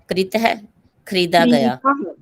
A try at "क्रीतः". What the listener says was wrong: वो कृतः और ये क्रीतः ऐसे पढ़ना, तब आपको पता चलेगा। ठीक है, क्रीतः।